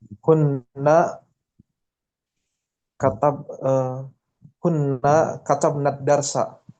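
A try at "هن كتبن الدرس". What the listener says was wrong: Nah, pendek katabna. Kalau nahnu panjang katabna.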